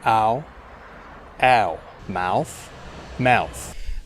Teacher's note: some very strong Australian accents, you can hear it starting from more like an A.